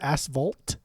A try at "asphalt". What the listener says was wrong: Fault. Why are you saying vault? Fault. Yeah, like an F, not a V. vault. No, you said vault. Like a vault. With a V rather than an F.